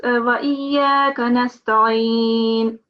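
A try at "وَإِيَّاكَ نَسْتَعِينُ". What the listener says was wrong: This is an ayn sound. You have to pronounce that as an ayn from your throat. Wa iyyaka.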